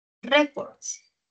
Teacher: El acento está en re.